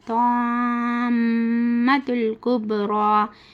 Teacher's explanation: میم کے پر تشدید ہے تو اس میں گنہ کرنا